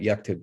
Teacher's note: you notice the vowel disappears so now the k and the t are right next to each other